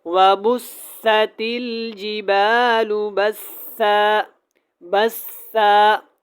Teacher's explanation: ایک زبر پڑھی جائے گی وقف میں